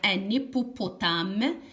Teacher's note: parfois on fait la liaison ça veut dire le h est muet